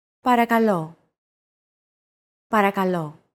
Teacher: Don't forget that words get accentuated in Greek, so make sure to stress that final syllable with the accent mark.